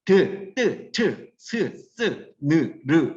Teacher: 혀끝이 위 잇몸의 안쪽에 붙었다 떨어지면서 나는 소리다. 그래서 조음 위치가 치조음, 잇몸 소리.